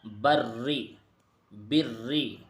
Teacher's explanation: را کے نیچے زیر ہے تو اس کو باریک پڑھیں گے